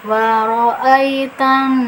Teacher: Nah, di sini ada nun bertasdid yaitu nun gunnah. Jadi nunnya itu ditekan karena ada tasdid, kemudian ditahan ya, didengungkan. Lamanya dengungan bisa 2 atau lebih ya.